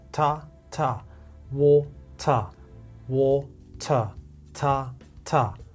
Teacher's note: the first syllable is getting all the energy.